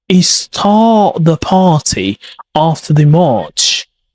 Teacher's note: Hear that long vowel stretch? That's what gives British English signature sound. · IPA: /ɑː/